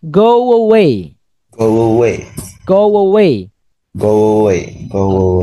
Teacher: go ujungnya kan u ya Iya bertemu dengan vowel vowelnya e kita sambungkan ini seperti di tengahnya itu ada W ada W